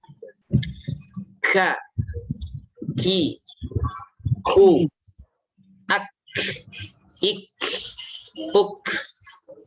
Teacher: Kalau kaf itu dia terbedakan dengan qaf itu dari sisi sifat, ya. Sifatnya hams kalau qaf sifatnya jahr. Hams alirkan anginnya, alirkan angin.